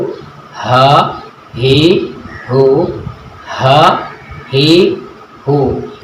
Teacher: हा की जो अदायगी है वो अक्साए हलक से होती है, यानी हलक के निचले वाले हिस्से से हा अदा होता है। जब हम हा को अदा करते हैं, गले का जो निचला वाला हिस्सा है वो वाइब्रेशन करता है।